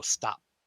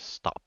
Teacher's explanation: That P at the end, we don't actually have to open our mouth after the P. We just go stop.